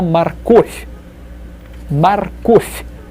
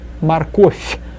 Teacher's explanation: V at the end is read as f, softened